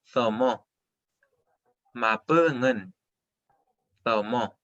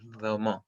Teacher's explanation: Sonido con la lengua entre medio de los dientes, interdental.